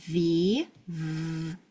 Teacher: top teeth, bottom lip. V. I can feel my voice. That one's voiced.